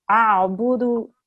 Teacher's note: you really have to make an ayn sound in your throat there. And it can be a difficult sound because it's not one we make in English.